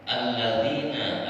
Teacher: Nah di sini lamnya tidak nampak, tak terbaca. Ketika dibacanya ataupun baik itu mau disambung ataupun dipotong, gak terbaca lamnya. Maka setiap lam yang tak terbaca disebutnya alif lam asyamsi, atau yang disebutkan apa tuh namanya, ikhfa syamsi. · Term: idgham syamsi